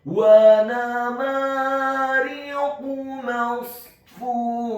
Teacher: di akhir ayat huruf ta marbutohnya diubah menjadi huruf ha yang tafkhim yang tebal dan dibaca sukun